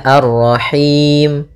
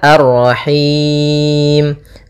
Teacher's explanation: Kemudian pada lafal Rahim ada bacaan mad arid lis sukun, yaitu kita boleh memanjangkannya 2 harakat, boleh juga 4 harakat, boleh 6 harakat. Mad arid lis sukun terjadi ketika akhir bacaan kita, yaitu ketika di sini Ar-Rahimi pada dasarnya karena kita waqaf mimnya menjadi sukun.